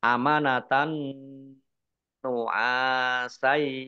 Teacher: fathah tanwin bertemu dengan huruf nun, bacaan idgham bi gunnah masuk dengan mendengung. Mendengung nun tasdid dibaca gunnah atau mendengung, ditahan 2 harokat.